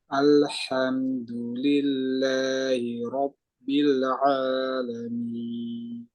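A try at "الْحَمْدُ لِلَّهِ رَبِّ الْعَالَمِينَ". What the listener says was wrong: rbil jangan dilepas lidahnya jangan dilepas rbil Biarin di atas dulu rbil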